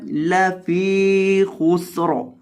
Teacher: فا کو لمبا کرنا ہے کیونکہ فا کے بعد یا مدہ ہے